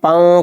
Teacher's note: تنوین یا نون ساکن کے بعد حروف اخفا آوے تو نون کی آواز کو ناک میں چھپا کر پڑھنا چاہیے، نوک زبان تالو سے ہٹا کر